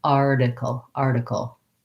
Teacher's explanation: And the T in article, we say as more of a flap. So in American English, the T in the middle of words often sounds like a D. So I'll rewrite that as a D because that'll help your brain to get that pronunciation rather than article with a puff of air.